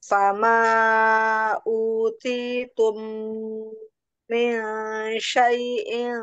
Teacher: mim sukun bertemu mim, ditahan ya dengung. Idgum mim.